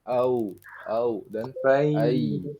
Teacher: Nah, tapi harusnya dibacanya jangan masuk ke hidung ya. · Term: lin